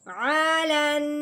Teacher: تو اب نون کا غنہ ہے تو ناک میں سے آواز نکالیں گے لیکن منہ باندھے نہیں کریں گے